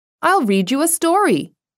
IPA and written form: aɪl riːd juː ə ˈstɔːriː (I'll read you a story)